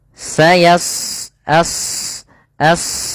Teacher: Di sini pada lafal shad tebal karena huruf shad salah satu sifatnya adalah isti'la yaitu pangkal lidah terangkat